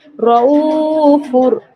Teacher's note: র জবর র, হামজা ওয়াও পেশ উ, ওয়াও সাকিন ডান দিকে পেশ, ওয়াও মাদ্দা, ওয়াও মাদ্দাকে এক আলিফ পরিমাণ টেনে পড়া, হামজা ওয়াও পেশ উ, রউ ফা র দু পেশ ফুর, রউফুর।